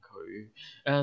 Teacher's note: fifth tone 佢, low rising 佢